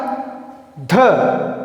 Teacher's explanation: तो ध वर्ण का हमने उच्चारण किया तो हमें अधिक वायु या श्वास की आवश्यकता हुई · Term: महाप्राण